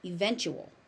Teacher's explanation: That ch sound, that TU is a very hard ch.